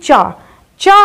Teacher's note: चा जो है वो तालु से बोला जाता है, क्योंकि जिह्वा जो है वो तालु से स्पर्श होती है